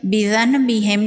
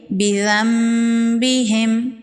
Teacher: نون ساکن کے بعد با ہے، یہاں پر اقلاب کا قاعدہ ہوگا، نون ساکن کو میم میں بدل کے پڑھیں گے